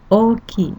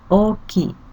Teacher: The first character O pronounced twice long like O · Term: long vowel